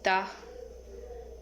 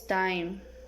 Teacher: Characteristic alveolar, stop, and voiceless.